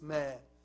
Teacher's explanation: Ma, it's mim alif. Long vowel. But it's not longer, not longest. Some students like to enjoy the recitation and they make the long vowel longer or longest.